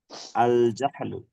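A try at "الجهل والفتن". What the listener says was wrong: না, এটা হা কেন উচ্চারণ করছেন আপনি? হা বলবেন, হা, নরমাল। হ্যাঁ, একদম হালকা, পড়েন তো।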